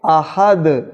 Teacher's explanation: اب ہم جب یہاں آیت وقف کریں گے تو تنوین سائلنٹ ہو جائے گی، لہذا دال سائلنٹ پڑھے جانے کی وجہ سے قلقلہ ہوگا. احدن کو جب وقف کریں گے احد تو دال پر قلقلہ ہوگا